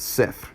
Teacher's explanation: it's almost kinda like a rolled R at the end of the word